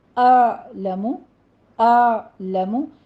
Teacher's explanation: اعلم میں حمزہ کے بعد عین ساکن کی آواز آئے گی، وسط حلق سے ادا کرنا ہے اس کو